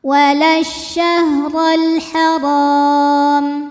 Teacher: Kemudian alif lamnya dinamakan alif lam qamariyah ya, karena alif lam bertemu huruf qamariyah yaitu ha, lam dibaca jelas.